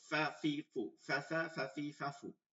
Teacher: জু জাজা জাজি জাজু জিজা জিজি জিজু জুজা জুজি জুজু ফা উপরের দুই দাঁত নিচের ঠোঁটের পেট লাগাইয়া তারপর বাতাস বের করব